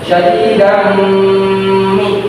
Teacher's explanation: terdapat harokat tanwin bertemu dengan huruf mim, maka harus dibaca mendengung, karena arti dari idgham di gunah sendiri adalah memasukkan huruf dengan mendengung.